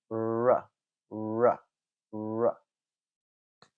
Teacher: Okay, so feel the front of your tongue, push it up, place it close to the alveolar ridge, and then make a sound like r, r. You can also tell that my lips are ever so slightly rounded